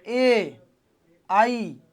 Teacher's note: ए बोलते हो, इसका मतलब जीभ आगे दांतों पे टच कर रही है, अगला भाग सक्रिय है।